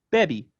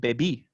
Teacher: stress moves from the typical penultimate position to the final position